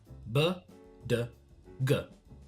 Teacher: Here the consonants are pronounced followed with the schwa /ə/ sound